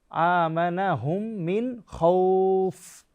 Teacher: খলকের শেষ ভাগ থেকে উচ্চারণ করতে হবে